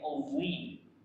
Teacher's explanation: Jadi pangkal lidahnya panggah naik meskipun dia kasroh.